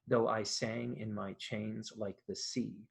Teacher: There's also an anapestic rhythm that's quite common in English verse. It's unstressed, unstressed, stressed.